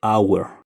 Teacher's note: A diferencia del anterior que se escribe con H, esta H es muda y solamente se dice hour